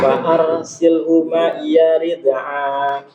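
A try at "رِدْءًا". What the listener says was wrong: Ini hamzah bukan ain. A biasa. Fa'arsilhu ma'iya rid'a.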